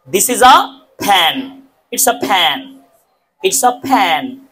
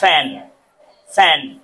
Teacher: একটা হচ্ছে দুই ঠোঁট বন্ধ করে উচ্চারণ করেছি আমি, ফ্যান, ফ্যান, ফ্যান। আরটা হচ্ছে উপরের দাঁত আমি নিচের ঠোঁটের সাথে লাগিয়ে উচ্চারণ করেছি